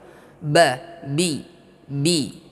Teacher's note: Ba di sini ya syiddah antara dua bibir, bibir atas dengan bibir bawah. Ba, bi, tertahan.